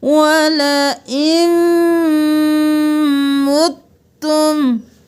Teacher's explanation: یہاں پر نون کو نہیں پڑھیں گے، حمزہ کو میم کے ساتھ ملائیں گے. میم پر غنہ ہے تو دیر لگائیں گے